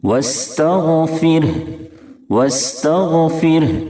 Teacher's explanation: غین کو مکمل پر پڑھیں گے کیونکہ غین حروف مستعلیہ کے ساتھ حرفوں میں سے ہے، اور را ساکن سے پہلے زیر ہے اس لیے را کو باریک کریں گے یعنی پتلا پڑھیں گے